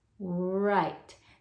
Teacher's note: There's a very faint W sound on that. · I'm just barely making that w sound